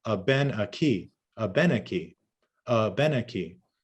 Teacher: We always stress the final syllable.